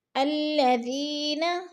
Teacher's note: الذین، ذی پہ یا مدہ ہے، یا مدہ کو بھی ہم نے 1 الف 2 حرکات کے برابر لمبا کر کے پڑھنا ہے